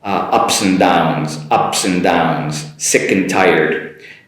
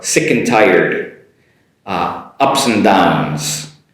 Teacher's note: you can't really hear the “a” nor the “d” so just an “n” sound between them